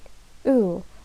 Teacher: the position of ooh is long high back rounded vowel